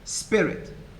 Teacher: The first syllable is stressed, as in spirit, and the second is unstressed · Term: feminine rhyme